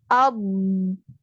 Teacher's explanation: Pada makrot huruf lam. Jadi ujung lidah ini terdorong sampai ke gusi atas.